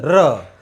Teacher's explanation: इस व्यंजन के उच्चारण प्राणवायु जीवा को प्रकंपित करती है, कंपन उत्पन्न होता है जीवा में